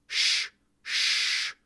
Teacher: a harder retroflex sound similar to English SH, but made with a tongue tip further back and lips rounded. Sh. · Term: SZ